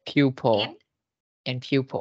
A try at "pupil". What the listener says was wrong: Không phải là pew. Không phải là pew. People. Okay, people nha.